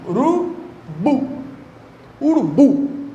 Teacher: O forte é o bu. É urubu. Essa palavra, portanto, é uma oxítona. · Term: sílaba tônica